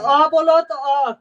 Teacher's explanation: कंठ से आवाज आता है, इसमें दांत जीभ ओष्ठ का कोई योगदान नहीं होता है